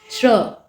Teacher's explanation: तो श्र का उच्चारण अगर आप करें तो इसमें जो है तालव्य श आपका होता है, र होता है और अ होता है, अ की ध्वनि होती है लास्ट में, श्र, अ का उच्चारण हो रहा है ना, तो अ अंत में होता है। और जो ये तालव्य श आप इसमें लगाते हैं शुरुआत में, वो आधा इस्तेमाल होता है, मतलब उसका ह्रस्व उच्चारण करते हैं, इसीलिए उसके नीचे हलंत का प्रयोग होता है।